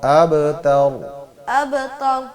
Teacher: تا باریک ہوگا، را موٹا ہوگا